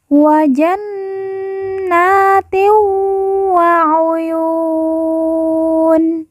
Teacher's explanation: Nun yang bertasydid langsung ditekan, ditahan 2 harokat dan didengungkan. Kemudian na kita baca panjang 2 harokat karena di atasnya terdapat alif kecil.